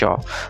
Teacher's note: जीभ जब ऊपर टच करती है तालु को, थोड़ी टेढ़ी हो जाती है, उसको बोलते हैं मूर्धन्य।